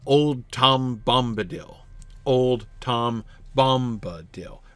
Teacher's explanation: he tends to begin his lines with a spondaic foot